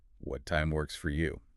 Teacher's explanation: You want to put a tiny bit of vocal stress on the word works to emphasize the consideration of their convenience.